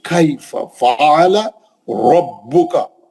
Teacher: रा को पुर पढ़ना है, भा को सख्ती से पढ़ना है